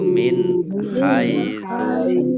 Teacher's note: nun sukun bertemu dengan huruf kha bacaan izhar dibaca jelas